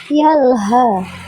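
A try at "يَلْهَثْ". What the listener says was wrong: Tinggal tambah sa.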